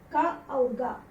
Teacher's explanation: पहला और तीसरा अक्षर है, दोनों अल्प प्राण है